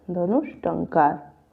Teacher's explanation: विसर्ग का क्या हो जाएगा, मूर्धन्य श हो जाएगा और टंकार हो जाएगा, धनुष टंकार।